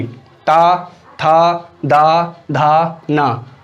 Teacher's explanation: जब आप इनका उच्चारण करेंगे तो आपके जीवा जो है वो दांतों से स्पर्श होगी।